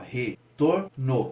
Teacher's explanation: Quando a gente pronuncia, a gente pode ver qual é a sílaba tônica, retorno. A gente tem uma ascendência no tor, então a gente pode ver que o tor é a sílaba tônica.